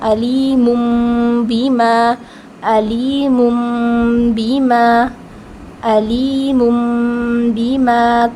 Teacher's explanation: نون ساکن یا پھر تنوین کو میم میں بدل دیتے ہیں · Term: اقلاب